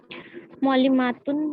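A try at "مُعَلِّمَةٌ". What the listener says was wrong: देखिए पहले यहाँ पर तो मीम में अलिफ नहीं लगाना है ना, मीम पर जबर है, मुअल्लिमतुन।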